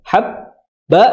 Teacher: bihi 2 harokat, habba ditahan banyak, habba, jangan haba, tapi habba.